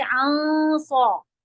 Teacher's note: نون کا اخفا ہیوی ہوگا صوت کی وجہ سے